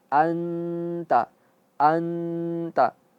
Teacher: Nun mati bertemu dengan ta, dia ikhfa. Dia gunnah. Terus masuk hidung tapi tipis.